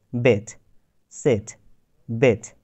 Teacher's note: তো এখানে আমি কিন্তু ই উচ্চারণ করেছি কিছুটা এর মতো, আবার কিছুটা ই এর মতো, অর্থাৎ এও না আবার ইও না, এর মাঝামাঝি একটা উচ্চারণ হচ্ছে বেট, সেট, বেট, সেট। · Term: শর্ট ই